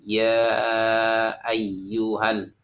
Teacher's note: Yang pertama ada namanya mad wajib muntasil, yaitunya terdapat 5 ketukan cara membacanya, seperti ya ayyuhal.